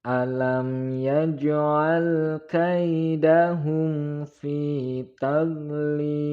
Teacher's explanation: Alam yaj'al mim sukun bertemu dengan ya, maka hukum bacanya adalah idhar syafawi, tidak boleh mendengung.